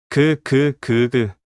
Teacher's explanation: 혀 뒤쪽이 목구멍을 막죠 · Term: 기억